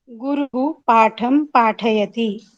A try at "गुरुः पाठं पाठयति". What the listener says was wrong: हाँ, अत्र गुरुः इति पदे किञ्चित् भारं दत्त्वा गुरुः पाठं पाठयति, पुनः एकवारम्।